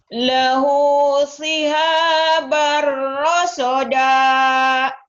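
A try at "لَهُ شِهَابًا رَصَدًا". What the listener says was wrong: Shinnya kecil apa besar? Shinnya lagi. Shinnya nggak keluar. Shin.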